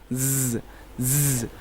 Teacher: اب زا کو پڑھتے ہیں تو اس کے اندر ہلکی سی سیٹ، اس کے اندر سیٹی کی آواز پیدا ہوتی ہے